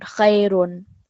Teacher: It's the tanween of dhamma. So when you read it, it's khayrun. It produces like a noon sound.